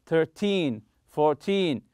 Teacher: when using these words to talk about quantity time or money stress the second syllable